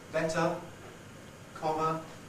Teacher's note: In final position, better, comma, it tends to be fairly open. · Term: schwa